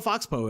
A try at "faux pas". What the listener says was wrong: F-A-U-X. So it's F-A-U-X-P-A-S. Faux pas. He read it as Fox Pas. Fox Pas. Fox Poe. Oh, because he heard of faux pas, so he turned that into Fox Po.